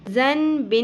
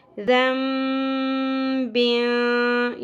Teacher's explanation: زن بن نہیں پڑھنا، جبکہ نون کی ساؤنڈ کو ہم میم میں بدلتے ہوئے پڑھیں گے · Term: اقلاب